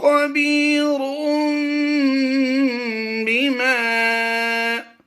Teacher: تنوین کے بعد حرف با آ گیا تو تنوین کی نون کو ہم نے میم سے بدل دینا ہے۔ یہ چھوٹی سی میم آپ کو اکثر قرآن پاک کی تلاوت کرتے ہوئے ملتی ہے، اس کا قاعدہ سمجھ لیجئے، تو یہی قاعدہ ہر جگہ پر آپ سامنے رکھتے ہوئے اس کی تلاوت کر لیں گے۔